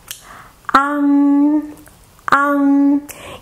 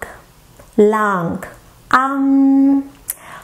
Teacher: open your mouth wide, like you're saying ah, and then let the air out through the back of your nasal cavity with the ng sound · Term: nasal final